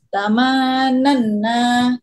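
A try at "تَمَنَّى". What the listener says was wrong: Ah, nunya terlalu banyak. Tamanna.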